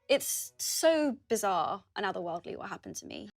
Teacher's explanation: the word 'bizarre' has two syllables, with a long /ɑː/ sound in the second syllable